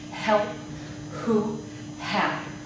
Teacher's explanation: There should be no obstruction at all in the H in words such as help, who, have.